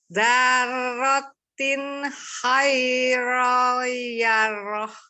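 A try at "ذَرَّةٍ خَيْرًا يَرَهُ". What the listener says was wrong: Ini kurang dengung. Ayo ditambah lagi, diulang lagi. Dzarratin khairan yarah. Dengung. Khairan yarah.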